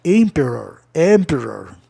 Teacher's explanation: A palavra é proparoxítona terminada em vogal consoante, OR. Como é proparoxítona, a sílaba tônica vem em emp.